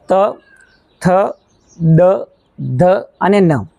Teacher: દંત્ય તરીકે ઓળખવામાં આવે છે તો દાંતની નજીક સ્પર્શ કરે છે દાંતના જે નીચેનો ભાગ છે ત્યાં સ્પર્શ કરે છે એટલા માટે તેને દંત્ય વ્યંજનો તરીકે ઓળખવામાં આવે છે